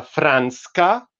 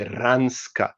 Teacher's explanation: they actually deleted the first consonant and the or that the word is actually ransa so one